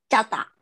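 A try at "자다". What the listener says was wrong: 今 な ん か 変 に チ ャ ー だ よ り に な っ て し ま っ て い る 。 チ ャ ー だ の 発 音 に 近 い 。 も っ と 濁 っ て 力 を 普 通 に 読 む と ど う な り ま す ？ こ れ は 平 音 な ん で す 、 平 音 。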